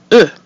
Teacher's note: the French e is more precise with the rounded mouth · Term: mute e